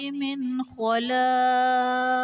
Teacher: خا آ رہا ہے تو یہاں پر اظہار کا قاعدہ ہوگا، یعنی نون ساکن میں ہم غنہ نہیں کریں گے ۔ خلاق میں الف سے پہلے لام پر زبر، الف مدہ